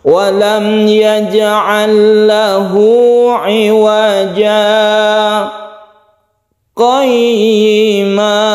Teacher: Setelah kita panjang satu alif, kita berhenti tanpa nafas, kemudian kita qayyima. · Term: saktah